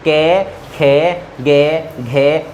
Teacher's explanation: जब आप कै बोल रहे हो तो ये कंठ में आपके कंपन उत्पन्न हो रहा है